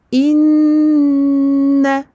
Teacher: Il est vert, il porte une shadda, on va lui donner sa durée très longue. Inna. On ne va pas dire inna. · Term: runna akmal ma takun